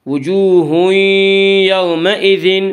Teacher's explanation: وجوہ یومئذ میں ادغام بالغنہ ہوگا